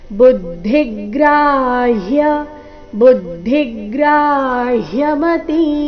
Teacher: ಬುದ್ಧಿ ಭೂ ಮೇಲೆ ಆಘಾತ ಧಿ ಮೇಲೆ ಕೂಡ ಆಘಾತ ಬರಬೇಕು ಕಾರಣ ಮುಂದೆ ಗ್ರ ಸಂಯುಕ್ತಕ್ಷರ ಗ್ರ ಆದ ನಂತರ ಹ ಅಧಿಕ ಯ ಸೇರಿ